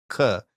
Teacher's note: your tongue is touching your velum in the back of your throat